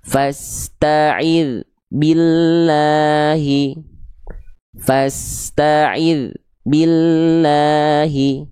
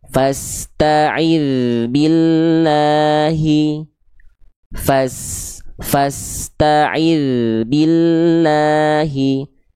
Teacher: Perhatikan dal sukunnya jangan sampai terputus suaranya.